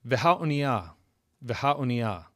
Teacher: So in the case of oniah, the kamatz katan, the first vowel at the beginning of the word, is reduced when we add the definite article.